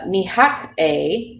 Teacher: that H there that gets inserted after the T it makes a huff and puff sound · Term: lenition